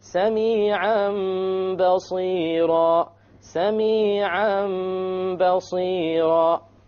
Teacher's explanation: We change the tanween into a meme, and that is called iqlab.